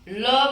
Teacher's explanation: जब हम ल बोलते हैं तो हमारी जीवा जहां पर स्पर्श करती है उसके साइड से हवा निकलती है, इसलिए इसको पार्श्विक व्यंजन कहा जाता है।